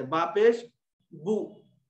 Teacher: पेश को अदा करते वक्त होंठ क्या होते हमारे, गोल होते